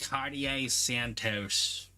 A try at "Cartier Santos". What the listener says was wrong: No, it's toes, like feet. Santos.